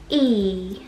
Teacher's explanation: 它的这个振动部位是在口腔前部，牙齿的后面 ，所以呢，它跟我们那个▁吞，它那个振动部位是不一样的。所以要发好这个单词，诀窍就是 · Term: 长音的▁e